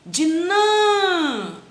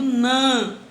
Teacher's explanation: Então eu vou ter o som de an e não de a. É um timbre fechado, é um acento circunflexo.